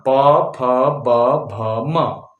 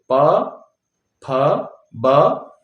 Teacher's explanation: ये सब कहां से होठ से आवाज आती है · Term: प वर्ग